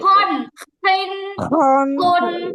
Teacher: কণ্ঠনালীর উপরিভাগ থেকে। খ উচ্চারণ করার সময় গলার মধ্যে খসখস আওয়াজটা অবশ্যই হবে, নাইলে খ উচ্চারণের শুদ্ধতাই হবে না।